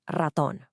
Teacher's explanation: this is that famous tapped R sound